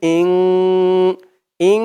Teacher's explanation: ইকফার 15 হরফের এক হরফ সিন আসছে তাই এখানে ইকফা অর্থাৎ নাকের ভিতরে লুকিয়ে গুন্নাহ করে পড়তে হবে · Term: ইকফা গুন্নাহ